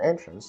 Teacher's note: An entrance with the accent of the first syllable is a noun meaning a way in